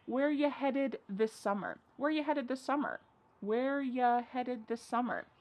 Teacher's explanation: a great way to sound a little bit more fluent in English is to reduce the word you